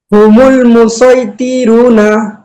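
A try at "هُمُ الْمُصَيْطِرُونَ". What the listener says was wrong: মধ্যে তবাই আছে, একটু সুন্দর ভাবে বলি। তোতে টান হবে না, হুমুল মুসাইতিরুনা। হরফগুলো একটু সুন্দর হবে। যে হুমুল মুসাই এটা সিন দিয়ে বলি।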